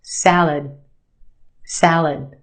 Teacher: syllable you're right the a sound in the first syllable salad the second syllable is our schwa it said very quickly and we have that sound salad salad i'll try the salad